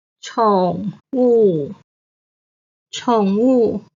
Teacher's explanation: 宠 is the third tone. 物 is the fourth tone.